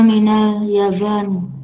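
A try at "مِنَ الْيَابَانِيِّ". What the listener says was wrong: Minal Yabani. Ya, yang panjang juga. Minal Yabani. Yabani.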